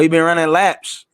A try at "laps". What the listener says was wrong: You said lap. You didn't say laps, you said lap. So this man running one lap, just stop? You gotta say every single letter, bro.